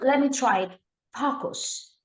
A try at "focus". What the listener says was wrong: you're closer to a swear word there. Focus, focus. You're saying fuckus almost. saying it's faux, faux. Try faux.